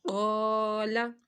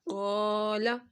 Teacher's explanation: الف سے پہلے قاف حروف مستعلیہ ہے تو ہم نے یہاں پر اس لفظ کو موٹا پڑھنا ہے